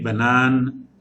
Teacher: like it is giving a humming or buzzing sound at the end of the word. Banan, nasal sound.